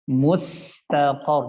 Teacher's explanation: jangan terburu-buru, tapi disempurnakan sifat rakhwa pada huruf sin